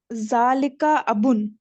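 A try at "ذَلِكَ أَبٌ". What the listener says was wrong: माशाल्लाह, धालिका अबुन।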